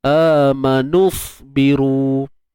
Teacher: waw ini digugurkan bacaannya, digugurkan bunyinya, tak ada dah. Sebab tu lah kita baca nun baris depan ni masuk terus pada sad yang sukun ini. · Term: iltiqa' sakinain